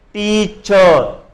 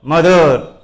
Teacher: టీచర్లో first syllable అనేది మనం గట్టిగా పలుకుతున్నాం కాబట్టి ఇక్కడ ఫస్ట్ సిలబుల్ని స్ట్రెస్ చేసి చూపిస్తాం.